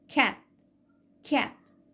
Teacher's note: الصوت خرج ولكن ما خرجش معاه هوا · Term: unreleased